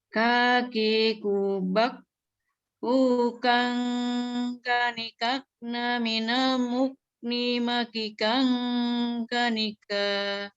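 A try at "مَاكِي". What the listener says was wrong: Maki, kinya 2 ketuk. Maki Nah, 2 ketuk sering saya bilang triknya di ayun aja. Maki kang gitu.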